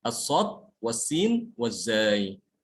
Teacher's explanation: Kenapa kok bisa tajam suaranya? Karena ya suara itu mengalir melalui celah yang tipis, yang sangat sempit. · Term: sifat sofir